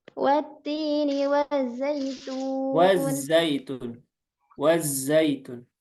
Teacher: Jadi dialirkan ya. Suaranya wazzaitun. Jadi jangan wajjaitun. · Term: rikhwahnya